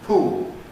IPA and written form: puːl (pool)